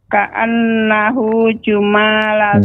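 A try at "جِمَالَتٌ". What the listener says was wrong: Jima. Huruf jim berharokat kasrah.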